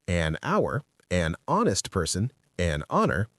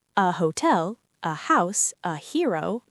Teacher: These h's are silent. So these words start with vowel sounds. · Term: silent h